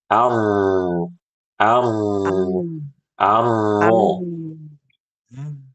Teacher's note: pangkal lidahnya harus dinaikkan agar suaranya tebal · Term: huruf ro yang fasih